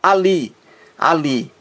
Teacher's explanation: a sílaba mais forte é a última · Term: oxitona